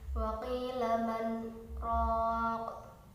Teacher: cara membacanya yaitu berhenti satu alif atau 2 harokat tanpa mengambil nafas · Lalu selanjutnya pada lafaz raqin, itu juga yang pertama ada bacaan mad tabi'i karena ada fathah diikuti dengan alif. Lalu pada huruf qafnya itu merupakan bacaan qalqalah kubra karena huruf qaf tersebut merupakan huruf qalqalah dan mati karena waqaf atau di akhir kalimat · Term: saktah